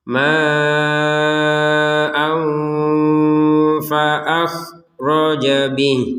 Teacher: Di sini ada tanwin. Ya, tanwin di sini bertemu dengan huruf fa, maka kita bacanya dengan samar.